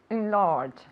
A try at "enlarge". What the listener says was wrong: Enlarge. Well, a little bit more on the first syllable.